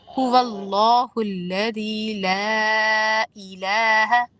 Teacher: تو لا میں لام الف زبر لا کے دو الف کے برابر کھینچنا ہے. ساتھ آپ نے مد اس کا ایک چھوٹا سا لگا ہوا ہے.